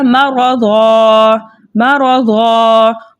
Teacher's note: صاد کو ہم نے منہ بھر کے ادا کرنا ہے · حالت وقف میں 2 زبر کی تنوین جو ہے الف مدہ سے بدل جاتی ہے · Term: وقف بالابدال